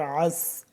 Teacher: عین کو گلے سے صحیح کر کے کھینچ کے نکالنا ہے، اور سین سیٹی کی آواز، پھر عین پھر سین۔